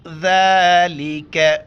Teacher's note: ذال کے اوپر کڑا زبر ہے ایک الف کی مقدار کھینچنا ہے اور ذال کے وقت زبان باہر نکالیں گے ذال کا زبر